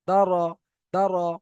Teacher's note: অনুশীলন থেকে আপনারা দেখেন দা জবার দা র জবার র দর দর। এখানে র এর উপরে জবার এসেছে। রটা পুর হবে।